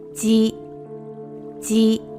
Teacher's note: the consonant for this sound is read as a voiced J sound rather than Z sound. So it's G rather than Z.